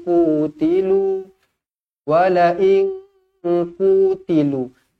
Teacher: Nun kosong bertemu dengan qaf, ikhfa hakiki, dengung dua harakat.